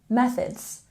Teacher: We have a stress here on the first syllable in methods. Methods. Remember to put your tongue between your teeth for this TH sound.